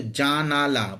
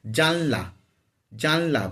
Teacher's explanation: মধ্যের আ স্বরধ্বনিটা লোপ হয়ে যায় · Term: মধ্য স্বরলোপের